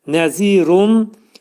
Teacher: Ona görə zini uzadırıq. Pəltək zə hərfidir. İki səs qədər uzadırıq. Nəzirun. Nəzirunda burda görürsüz ixva yazılıb.